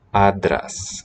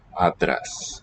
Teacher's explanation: Spelled with, so for script, angle brackets, A-N-T-R-A-S. 2 letters, it used to be 2 distinct sounds, have smushed into one, voiced stop. Adras. Maybe a bit prenasalized, or like along the way it was.